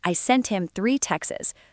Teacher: In fast speech, native speakers will often drop the T and just say Texas.